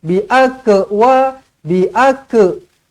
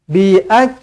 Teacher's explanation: huruf kaf adalah hamas. Perlu diberikan percikan angin sedikit.